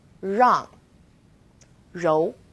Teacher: It's quite similar to the R sound in run, but the R is a little softer. So try moving your tongue more to the back of your mouth.